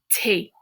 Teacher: Notice that TH sound in French does not make the th sound. It's just a t.